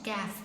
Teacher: കാഫിനും അതേപോലെതന്നെ നാവിന്റെ അങ്ങേ അറ്റം തന്നെയാണ് പക്ഷേങ്കിൽ അണ്ണാക്കിലെ മാംസ അസ്ഥിഭാഗം മാംസവും അസ്ഥിയന്റെ ഇടയ ഭാഗത്തുനിന്നാണ് കാഫ് പറയുന്നത്. മാംസുള്ള ഭാഗത്ത് ആവല്ല അസ്ഥി ഭാഗത്തുനിന്നും ആവല്ല.